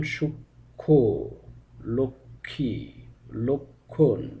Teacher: প্রতিটি ক্ষেত্রে মফলার উচ্চারণটি বাদ গিয়েছে বটে, তবে শেষে একটি আনুনাসিক স্বর যুক্ত হয়েছে।